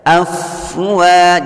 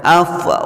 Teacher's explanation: fa sukun, jangan sampai ada memantul, ada pantulan ya ketika membaca. Afwa, jadi membacanya di ayun.